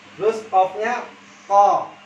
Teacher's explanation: pangkal lidah dengan langit-langit atas yang belakang yang lunak itu tertahan dulu suaranya di situ. Ko, bukannya langsung buka. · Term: huruf qaf